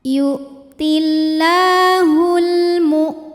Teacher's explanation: tertahan lagi suaranya ya karena punya sifat namanya syidah